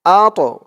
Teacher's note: এই তটা কলকলার হরফ ধাক্কা দিয়ে পড়তে হবে,